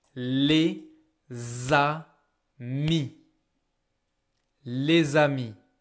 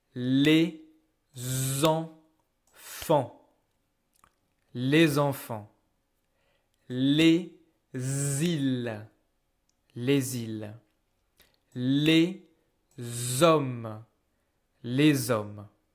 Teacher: The liaison is mandatory, so I'm using this letter S to make the Z sound.